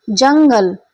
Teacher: एकदम झटके के साथ उच्चारण हो रहा है और क्या है आपका नाक के साथ वायु निकल रही है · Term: अनुस्वार